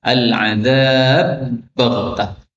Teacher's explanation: ba ketemu ba, al-adzab baghtah, boleh idgham menjadi al-adzab baghtah